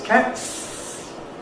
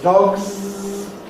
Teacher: In cat is voiceless. Voiceless s is what we add. Z is the same sound but voiced.